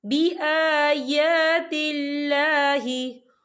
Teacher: अल्लाह का नाम जो है बारीक पढ़ा जाएगा क्योंकि अल्लाह के नाम से पहले ज़ेर है